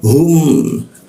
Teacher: hum di tenggorokan bagian bawah tebal dia.